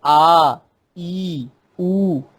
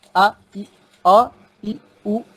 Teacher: दीर्घ स्वर वाले जो वर्ण हैं वो उच्चारण में ह्रस्व वाले से दुगुना समय लगाते हैं